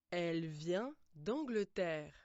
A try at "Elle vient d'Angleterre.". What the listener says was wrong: We don't pronounce the final T of elle vient. We pretend it's not there.